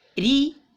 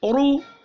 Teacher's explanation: ری باریک ہو گیا زیر کی وجہ سے